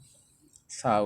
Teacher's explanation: সাটা হলো জিহ্বার আগাটা সামনের 2 দাঁতের আগার সাথে লাগায় সা উচ্চারণ হবে।